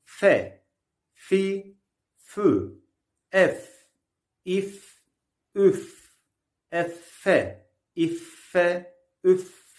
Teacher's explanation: f harfi üst ön dişlerin alt dudağa bastırılması ile çıkar ince bir harftir